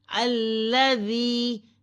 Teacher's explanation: یا ساکن سے پہلے زیر ہے، ایک الف کے برابر کھینچیں، لمبا کریں کیونکہ یہ یا مد ہے. یا ساکن سے پہلے زیر کا ہونا یہ یا مد ہے، اسے ایک الف کے برابر کھینچا جاتا ہے.